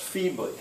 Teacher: two syllables the first one stressed